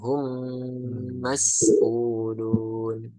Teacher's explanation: hum yang kedua baru didengungkan